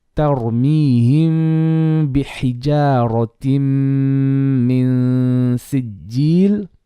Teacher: Now here is going to be our Ikhfaa Shafawi. We have a Meem before a ba. · So ra is going to be heavy because of the fatha before.